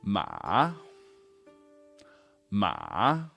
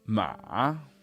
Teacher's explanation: Ma slightly down and then way up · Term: third tone